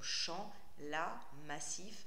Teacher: des sonorités très ouvertes comme chant, la, massif, avec des a, des i qui sont des sonorités assez ouvertes en français